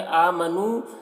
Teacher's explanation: ایہا الذین، ذال کو باریک پڑھیں گے اور یہاں پر یا مدہ ہے۔ آمنو، حمزہ میں کھڑا زبر ہے، ایک الف کے برابر کھینچ کر پڑھیں گے۔ · مد منفصل کو 3 4 الف کے برابر کھینچ کر پڑھتے ہیں اور ایک الف کے برابر بھی کھینچ کر پڑھ سکتے ہیں۔